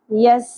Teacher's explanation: سین باریک سیٹی کے ساتھ